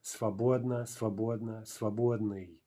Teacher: The mobile vowel drops out when we have an ending.